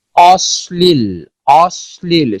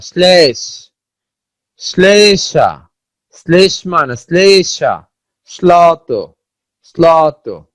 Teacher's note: ল ফলার প্রভাবে তালব্য স তার তালব্য উচ্চারণ হারিয়ে দন্তমূলীয় স এর মতো উচ্চারিত হয়, দন্ত স্বর মতো উচ্চারিত হয়, তালব্য স্বর মতো আর উচ্চারিত হয় না, বা অনেকটা বাধাহীন, তালব্য স্বর উচ্চারণটা অনেকটা বাধাহীন থাকে কিন্তু তালব্য স্বর মতো উচ্চারণ হয় না, উচ্চারণ হয় হলো দন্ত স্বর মতো।